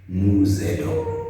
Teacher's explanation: we're combining these sounds and becomes a Z